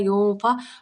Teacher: یہاں پہ ہم نے نون ساکن کا آواز کو ناک میں چھپانا ہے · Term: اخفا